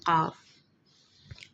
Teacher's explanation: ज़ुबान का पिछला हिस्सा लहात यानी हलक के कव्वे को छुए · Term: लहाती मुसम्मतें